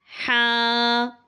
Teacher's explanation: اور اس سے اگلا حرف ہمارے پاس ہے ہا۔ جیسے سانس کو باہر نکالتے ہیں تو اس طرح یہ سانس کے ساتھ ادا ہوگی اور حلق کے درمیان سے یہ نکلتی ہے۔